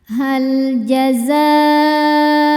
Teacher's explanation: Hal jazaul jaza za ini hukumnya mad wajib muttasil karena mad thobi'i bertemu dengan hamzah dalam satu kata. Mad thobiinya alif didahului harakat fathah kemudian hamzahnya u pada kata jazau maka zanya dipanjangkan boleh empat boleh lima harakat.